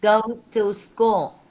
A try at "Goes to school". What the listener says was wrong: So it's long. two long vowels, so you want to lengthen it more.